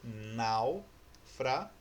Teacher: esse A ele usa um pouquinho do som do U, que é um som mais fraco. O U não produz o som completo · Porque o som do U ele é muito fraco. Então ele não é uma sílaba sozinha. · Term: semivogal